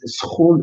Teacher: It is just two fricatives next to each other. It's a cluster. It's a consonant cluster.